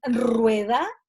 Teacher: está sonando con una vibrante múltiple · Por lo tanto, la doble R siempre es un sonido intermedio. Pero cuando yo digo rueda, está sonando como una vibrante múltiple